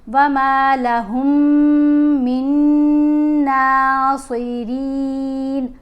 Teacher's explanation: را کو باریک پڑھیں گے کیونکہ را کے نیچے زیر ہے۔ را کو پڑھنے کے اصول بھی یہ ہوتے ہیں کہ را کے اوپر زبر ہو یا پیش ہو تو پھر اس کو موٹا پڑھتے ہیں. · اسی طرح آگے نون کا ادغام ہے، یعنی یہ نون ساکن ہے اور یہ نون مشدد ہے، تو نون ساکن نہیں پڑھا جائے گا، میم کو غنہ کرتے ہوئے مشدد نون سے ملایا جائے گا۔ وَمَا لَهُم مِّن نَاصِرِينَ، را کو باریک پڑھیں گے کیونکہ را کے نیچے زیر ہے۔